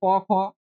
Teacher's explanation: তাহলে বর্গের প্রথম বা দ্বিতীয় বর্ণ হচ্ছে অঘোষ বর্ণ উচ্চন করার সময় স্বরতন্ত্রে কম্পন হয় না বলে কি হয় মৃদু থাকে এইজন্য এই বর্ণগুলোকে বলে অঘোষ বর্ণ